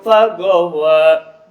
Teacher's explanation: Wa harus dibaca panjang 2 harakat, tidak boleh lebih. Hukumnya adalah bad tabi'i.